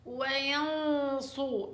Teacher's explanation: النون مع الصاد تفخيم لأنها إخفاء، فغنة التفخيم هنا غنة مفخمة قصدي، والصاد مفخم والراء مفخم